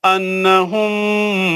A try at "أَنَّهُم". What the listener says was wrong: نہیں انہم نہیں غنے کے ساتھ